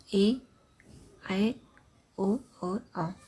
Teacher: इनके उच्चारण में 2 मात्राओं का समय लगता है, इन्हें द्विमात्रिक कहते हैं। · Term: दीर्घ स्वर